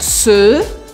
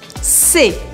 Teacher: o singular masculino é se, bem fechado. E o plural, sendo feminino ou masculino, é se, mais aberto. Se, se. Você tem que exagerar nessa pronúncia, senão eu não sei se você está falando no singular ou no plural.